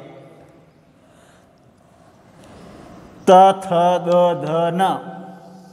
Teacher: इस प्रकार से ये वर्ण एक ही स्थान से उचित होने वाले हैं, त थ द ध न, तो ये दंत्य वर्ण हैं